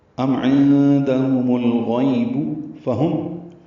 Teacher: عندهم میں عین وسط حلق سے ادا ہوگا